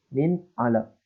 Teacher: Huruf nun sukun bertemu dengan huruf ain, maka dibaca dengan jelas. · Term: izhar